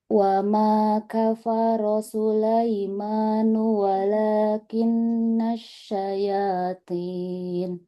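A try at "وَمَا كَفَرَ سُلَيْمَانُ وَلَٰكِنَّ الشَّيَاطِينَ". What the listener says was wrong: Huruf to-nya kurang tebal. Walakinna syayatin. Huruf to-nya sangat-sangat tebal.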